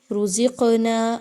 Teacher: قاف جو ہے وہ حروف مستعلیہ میں سے بھی ہے، اس کو موٹا بھی پڑھا جائے گا، لیکن کیونکہ قاف جزم کے ساتھ موجود ہے تو یہاں پہ قلقلہ کا اصول بھی فالو کرتے ہوئے ہم پڑھیں گے، یعنی قاف کو ہلا کے پڑھا جائے گا۔